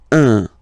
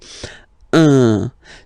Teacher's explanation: So if you listen to me, you don't hear any N, okay? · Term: the nasal